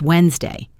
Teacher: The D in Wednesday is silent.